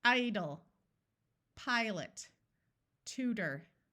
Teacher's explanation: the first syllable is accented so we will use the long sound and the second syllable is not accented so the vowel will schah